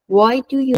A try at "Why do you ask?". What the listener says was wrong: بار نه، لحنش رو سوالی کن. Why do you ask?